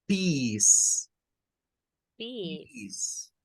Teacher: Lo primero que debemos de saber es que esta no suena, esta C suena a una S, a una S, y el diptongo EA en el inglés, cuando encontremos la combinación de una E con una A, no suena a EA, suena a una vocal I, como que fuera la I nuestra, pero es un sonido más prolongado